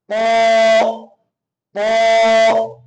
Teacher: জিহ্বার আগার পেট এবং সামনের উপরের দুই দাঁতে ঘোড়ার সঙ্গে লাগাইতে হবে ত ত ক বে উচ্চারণ করবো যতক্ষণ